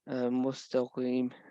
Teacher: The Qaf is a full mouth letter.